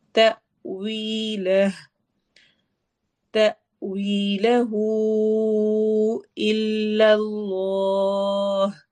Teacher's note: تأویلہ کو لمبا کرنا ہے چونکہ اس کے آگے حمزہ آ رہا ہے